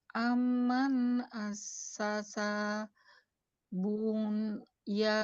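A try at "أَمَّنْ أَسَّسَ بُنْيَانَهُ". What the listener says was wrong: Tapi amannya kalau bisa didengungin ya, yang panjang. Amman assasa bunyanahu ala, masih panjang tuh ke belakangnya.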